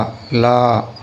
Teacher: லா வந்து நுனி நாக்கில் வச்சு நீங்கள் சொல்லணும். பல்லில் நுனி நாக்கு படுற மாதிரி